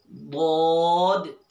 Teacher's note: حرف حافیہ زبان کی کروٹ اوپر کی داڑوں کی جڑ سے ایک حرف ادا ہوتا ہے، اسے کہتے ہیں حرف حافیہ۔